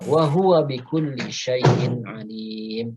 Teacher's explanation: bikulli lam tasydid, suaranya ditekan bukan ditahan ya.